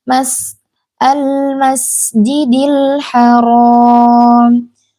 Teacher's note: Rnya ini tebal walaupun ha itu huruf tipis tapi karena ro itu berharakat fathah jadi dia dibaca tebal